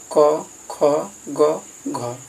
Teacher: क ख ग घ, इस चारों का उच्चारण स्थान कंठ हो जाएगा